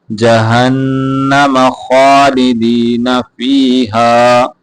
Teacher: ہا کو یہاں پہ جہنم، ہا موٹا کر کے پڑھیں گے